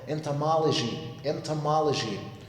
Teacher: And also the last O after the letter L is also a schwa sound.